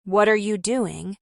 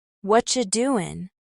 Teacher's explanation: instead of saying, What are you doing? as 4 clear words, a native speaker might say, What you doin'? The sounds merge.